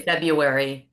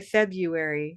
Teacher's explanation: we both stress that first syllable, that red pepper fee, and that makes that word distinct.